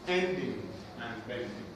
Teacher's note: feminine rhyme has two syllables the first syllable is stressed the second syllable is unstressed